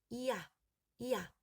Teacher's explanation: 처음엔 이와 같은 자리에서 시작해서 아로 옮겨갑니다. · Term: 이중모음